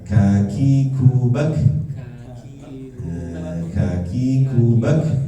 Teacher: kaf ya kaf ingat ya ada nafasnya